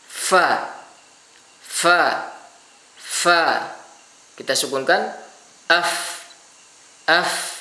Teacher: ketika kita melafalkan fa, baik fa itu berharokat ataupun sukun, maka ada angin atau desis yang keluar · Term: hams